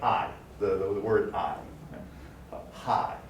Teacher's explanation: we would call this a low central to high front diphthong